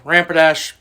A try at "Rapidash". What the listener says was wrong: Rapidash. Rapidash. You're saying ramp. Rapidash.